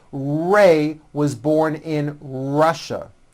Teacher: Notice how my lips come forward on all my R's and W's.